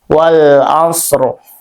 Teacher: Bunyi ro-nya tetap tebal ya, tapi setengah harokat.